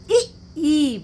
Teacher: इ ई बोलने में हम जिभ्या को अपने तालु से स्पर्श कर रहे हैं। जिभ्या तालु से स्पर्श किए बिना इ ई वर्ण नहीं निकलेगा। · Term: तालव्य वर्ण